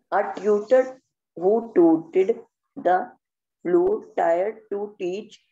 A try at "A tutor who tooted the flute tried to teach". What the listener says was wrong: Tried. It is not tired. It is tried.